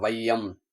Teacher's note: பாருங்க, ஐகாரம் சொல்லின் முதலில் வரும்போது, ஐகாரம் சொல்லின் முதலில் வரும்போது 1.5 மாத்திரை அளவில் ஒலிக்கும். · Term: ஐகார குறுக்கம்